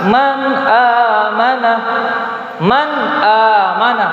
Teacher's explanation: Cara membacanya adalah tanpa disertai dengan gunah. Artinya tidak didangunkan, dibaca jelas. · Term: izhar